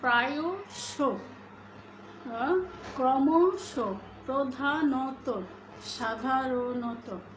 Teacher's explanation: এই ধরনের শব্দগুলোর শেষে যে ধরনের অ রয়েছে সেই অটি ওকারান্ত উচ্চারিত হবে